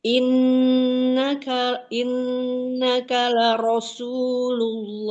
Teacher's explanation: R-nya aja yang tebal, Mi. Sinya jangan ikut tebal. Kalau sinnya tebal, Umi jadi kayak shad.